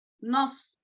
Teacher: صاد ساکن لگا ہے وہاں پر، اور اس کو کیسے پڑھیں گے؟ موٹا پڑھیں گے. نص اس کو سین نہیں پڑھیں گے، نس نہیں، نص.